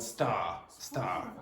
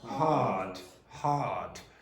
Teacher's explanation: RP is non-rhotic, which means we don't pronounce the R sound.